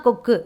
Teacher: முடிஞ்சிருக்குது கொக்கு அப்படின்றது வந்து அந்த கு வந்து பார்த்தோம்னா குறைஞ்சு ஒலிக்கும் சோ குறைஞ்சு ஒலிக்கக்கூடிய உகரம் வந்து குற்றியல் உகரம்